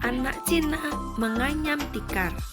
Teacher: jadi anak Cina itu mendatar ya Sesuai dengan garis datar menganyam tikar naik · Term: intonasi